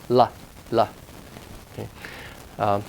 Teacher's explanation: sort of like a a guide or approximate except that's touching that tongue tip touches the alveolar area in air flows around the tongue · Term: lateral sound